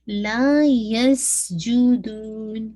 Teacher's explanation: یس ویسلنگ sound بھی واضح ہوگی